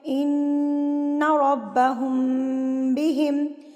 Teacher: میم ساکن کے بعد اگر با آ جائے تو غنہ کے ساتھ اخفاء ہوگا، یعنی کہ غنہ خفیف ہوگا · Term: اخفاء شفوی